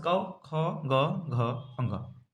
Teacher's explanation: क वर्ग को हम कंठ से बोलते हैं